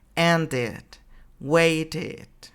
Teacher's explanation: Ahora, la tercera pronunciación dice, con los infinitivos que terminan en D o T, pronunciamos la E como una I.